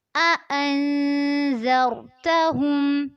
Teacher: अन पे इख्फा करना है, ज़र में रॉ को पुर करना है।